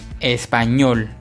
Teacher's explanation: Nos damos cuenta que la sílaba ñol lleva la mayor fuerza de voz. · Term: aguda